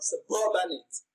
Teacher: you can hear the stress on the second syllable, suburbanate.